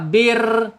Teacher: Inhirab condong ke dalam, lidahnya ditarik ke dalam ketika takrir, ketika bergetar. Bir ya. Ketika bir tarik ya. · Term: sifat inhirab